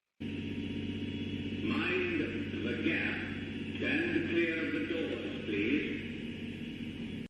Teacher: note, please is a long monophthong, E.